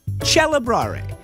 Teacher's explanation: When the C is followed by an E, the K became a CH.